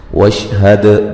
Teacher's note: دال پہ قلقلہ کریں گے، ہلا کے پڑھیں گے